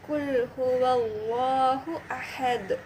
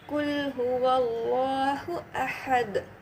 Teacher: தால் மேல சுக்குூன் வரும்போது இது கல்கலாவோட லெட்டர் ஆயிடுது அப்ப நம்ம இத எக்கோ சவுண்டோட படிப்போம்